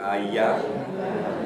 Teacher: that's the palatal sound with the tongue coming up towards the hard palate